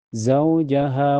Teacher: Zaujaha ha mantubni dohiri karena ada alif sebelumnya, harokat fathah di ha dibaca panjang 2 harokat